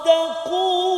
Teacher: jangan tebalkan huruf ta kerana nak tebalkan huruf sad